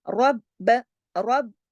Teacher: رب، اب با پہ دیکھیے تشدید ہے، رب، پہلے رب اور پھر با، با کی آواز 2 دفعہ آنی چاہیے، کیونکہ تشدید جو ہے وہ اسی چیز کا سائن ہے کہ یہ حرف 2 مرتبہ پڑھا جائے گا اور سختی سے جوڑا جائے گا